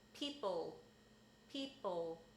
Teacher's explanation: a lot of American English speakers tend to pull the L back if an L is in the final position